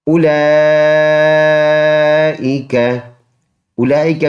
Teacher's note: اولئک میں یہ واو لکھا جاتا ہے، پڑھا نہیں جاتا. حمزہ پیش او، لام مد کڑی زبر لا، 4 الف کی مقدار، اس کو لمبا کر کے پڑھیں گے.